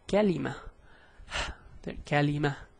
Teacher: it actually gives the sound of an H at the end, but a very weak H. So it'll be like kalima.